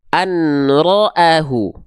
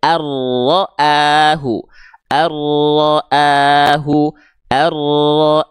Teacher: maka di sini enggak kita baca anroahu Enggak kita baca anroahu Nun di sini tak kita baca jelas karena berjumpa dengan huruf ro timbullah hukum tajwid idgam bilaguna maka bunyi an an an an · bunyi an an an an an an di sini dileburkan ke huruf ro jadinya arroahu arroahu arro paham enggak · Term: idgham bila gunnah